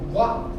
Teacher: Quando eu falo guá, eu ouço o A mais forte. Então ela está crescendo. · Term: ditongo crescente